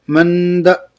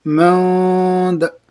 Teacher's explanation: حرفوں سے میں سے دال آئے اس لیے اخفا ہو گئی، اخفا کو نون کی آواز کو ناک میں چھپا کر 1 الف کے مقدار پڑھیں گے،